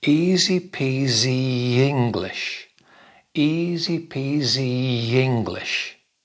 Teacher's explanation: There's an extra sound in the middle, in between E and I. E, E. There's a little Y sound.